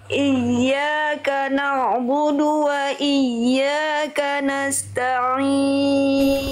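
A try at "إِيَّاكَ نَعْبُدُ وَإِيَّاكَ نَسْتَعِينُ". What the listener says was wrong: Bagus, tinggal di na'budu, ain sukunya jangan terbawa bu-nya dulu. Na'budu, jangan sampai na'bu. Ini udah siap-siap bu, ainnya belum tuntas. Tuntaskan dulu ain baru masuk ke bu. Iyyaka na'budu wa iyyaka nasta'in.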